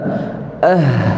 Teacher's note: makhraj kita tak tertutup rapat jadi suara kita berjalan sahaja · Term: rakhawah